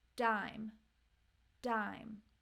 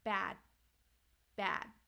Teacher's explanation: even though you don't have a puff of air there is a stronger sound in the beginning